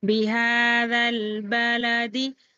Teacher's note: الف لام کے بعد حروف قمری کا با آ رہا ہے، تو یہاں پر لام ظاہر کر کے پڑھنا ہے ، لام کو جلد پڑھیں گے، دال کو جلد پڑھیں گے،